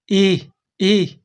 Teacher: पहले तो हम इ को बोलेंगे। इसके बाद मुंह से हल्की है जैसी हवा निकालेंगे। आधे है जैसी हल्की हवा निकालेंगे। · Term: विसर्ग